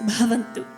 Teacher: is called the aspirated consonant or the aspirate so this is a short burst a short exhale that comes along with the consonant